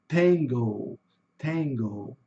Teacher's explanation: Tangle, olha aqui onde está a sílaba tônica, está no T, está no começo